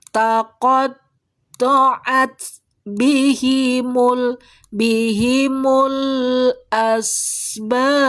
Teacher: Taqatta'at, huruf taknya sukun, berarti keluar sifat hamesnya. Jadi disidahkan dulu, ditahan dulu aliran suaranya, baru diikuti percikan hames.